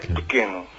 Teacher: Ese é átono, e o e átono en Portugal é moi débil, case non se pronuncia.